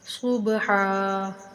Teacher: با بھی حروف کلکلا میں سے، اس کو ہلا کر پڑھیں گے اور ہا کو ایک الف کے برابر لمبا کر کے پڑھیں گے